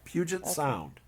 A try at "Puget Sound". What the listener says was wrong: You're saying it with an N.